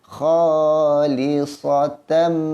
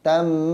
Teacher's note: Dengung dengan merapatkan bibir. Rapat serapat-rapatnya.